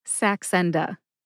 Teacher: I tend to emphasize that middle syllable